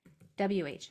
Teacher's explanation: it's kind of a blowing sound with a voiceless w at the end so you blow and then